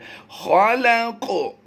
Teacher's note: लाम क़ाफ़ ज़बर लक़, तो ये क़ की आवाज़ जो है ये आवाज़ कलकला की आवाज़ होती है।